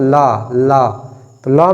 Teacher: ल में जीभ ऊपर टच होगी, परंतु जो हवा है दोनों तरफ से क्या है, क्रॉस हो रही होगी। तो इसलिए पार्श्विक व्यंजन कौन सा है, ल।